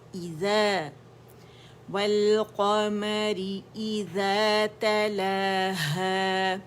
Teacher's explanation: اگر آپ نے سامنے منہ الجوف سے اس کی آواز نکالی یا جوف دہن سے تو آ ساؤنڈ آئے گی، تو وہ یہ اس کا مخرج نہیں ہے. حمزہ عقص الحلق پہ ہے